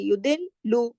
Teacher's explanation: लाम पे तशदीद है ना, 2 लाम है यहाँ, सख्ती से जोड़ के पढ़ेंगे।